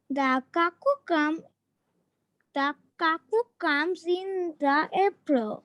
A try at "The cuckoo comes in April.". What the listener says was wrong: ফার্স্টে বলেছো কুক্কু, কুক্কু না কাক্কু।